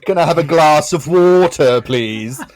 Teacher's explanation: she is wonderful with her open middle class accent and her slow vowels